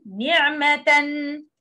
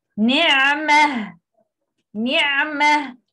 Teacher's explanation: We drop tanween and pronounce ha. Okay, this is the exception.